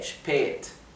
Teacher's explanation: la A con la diéresis, que es la A umlaut, se pronuncia con una E larga